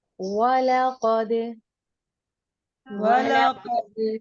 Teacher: قاف کو پر کریں گے اور دال کے اوپر قلقلہ کریں گے